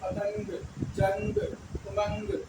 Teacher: आम लोग की तर इसको नहीं पढ़ना है बल्कि नाक से आवाज निकलेगी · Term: नून गुना